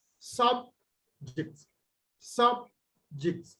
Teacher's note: subject as a noun is stressed on the first syllable